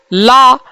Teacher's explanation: ला पार्श्विक ध्वनि है